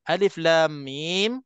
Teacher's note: betul aja jadi Alif Lam Mim Nah di sini kita nampak mim mati bertemu dengan mim hukumnya apa ini yang namanya ada idgham